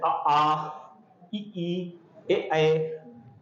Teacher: अवृत्तमुखी मतलब जिसमें होंठ की आकृति गोल नहीं होती